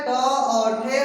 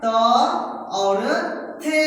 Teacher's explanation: हर एक वर्ग का पहला दूसरा वर्ण क्या होता है? अघोष वर्ण होता है।